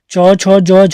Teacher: तो च वर्ग के चारों वर्ण चले जाते हैं स्पर्श संघर्षी के अंतर्गत। स्पर्श तो है लेकिन संघर्षी भी हैं।